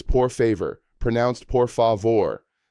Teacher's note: The stress falls on the final syllable, vor.